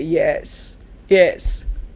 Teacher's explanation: say yes notice yes it's rising and suppose you say yes yes rising and then falling